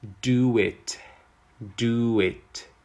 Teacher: when a word ends in either O or U, after a vowel, we use the w sound to link them together